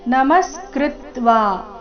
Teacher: ನಮಸ್ಕೃತ್ವಾ ಮ ಮತ್ತೆ ಕೃ ಮೇಲೆ ಆಘಾತ. ಕೃತ್ವಾ ವಾ ದೀರ್ಘ.